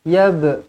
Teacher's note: lantunkan qalqalah di sini qalqalah sughra